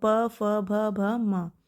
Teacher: भ भी हमारा किस में रहेगा? ओष्ठ में।